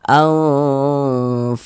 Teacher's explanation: karena dia didengungkan jadi suaranya itu kita tahan kita panjangkan sejenak